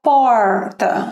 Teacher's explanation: Se você observar a minha língua, ela dá uma subidinha como se fosse no palato. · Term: R aqui do sul de Minas